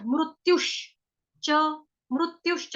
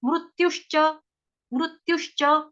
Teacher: मृत्यु के ऊपर आघात आएगा आधे शलगम वाले श का, च जो है चम्मच वाला च वो पूरा है